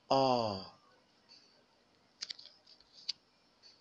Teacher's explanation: So this is also a long vowel. It is a back, open, tense, and unrounded vowel. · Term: ah sound